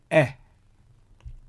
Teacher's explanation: it is pronounced as a very short or reduced eh sound. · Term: Chataf segol